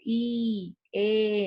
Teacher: el sonido va a salir de la parte anterior de la cavidad bucal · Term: vocales anteriores